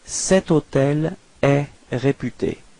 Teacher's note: Keep in mind that even if hôtel is starting with H, H is actually not pronounced, so the first sound of the word is O, so it does mean that it's a vowel, and in this case you will have to use cet as well, okay?